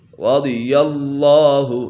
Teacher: اسم جلالت اللہ عز و جل کا لام ہمیشہ ہر حالات میں پر ہی پڑھا جائے گا، یہ اللہ عز و جل کا لام ہے تو اسی وجہ سے یہ لام پر پڑھا جائے گا۔